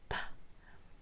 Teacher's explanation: You put your lips together. You build up air pressure behind your lips and it's a puff of air.